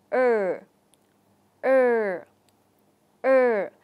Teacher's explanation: lưỡi của chúng ta hơi Nhấc lên và đưa về vị trí giữa mặt trước của lưỡi thì hạ xuống và chúng ta lưu ý là lỗi sẽ không chạm vào · chúng ta mở miệng vừa phải chúng ta đưa môi ra phía trước hơi tròn môi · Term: nguyên âm ở